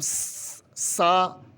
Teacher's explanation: زبان کی نوک سامنے والے اوپر والے دانتوں کے ساتھ لگائیں گے تو سا ادا ہوگا۔ سا کی آواز میں سیٹی کی آواز بالکل نہیں آنی چاہیے۔